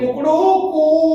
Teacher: तो कू जो समय लगा उसमें 3 गुना समय लगा, इसलिए त्रिमात्रिक शब्द कहलाते हैं। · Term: प्लुत स्वर